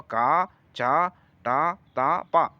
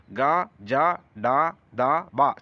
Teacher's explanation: గ జ డ ద బ సరళాలు వీటి రెండిటి కలిపి అల్ప ప్రాణులు అంటాం